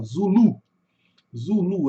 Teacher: A gente joga aqui a sílaba tônica no final